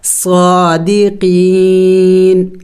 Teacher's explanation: وقف میں ہم نے اس نون کو سائلنٹ کرنا ہوگا، یعنی ساکن کرنا ہوگا، صادقین، لیکن آخر میں نون کی آواز نکلنی چاہیے